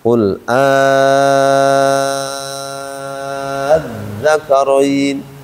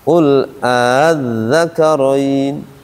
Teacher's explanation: yang pertama baca panjang enam harakat